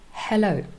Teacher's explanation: the unvoiced fricative for example in hello right here formed in your throat